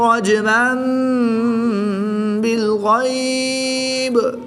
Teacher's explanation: تو یہاں پر مد لین عارض ہوگی، 2 سے 3 الف تک کھینچ کر پڑھیں گے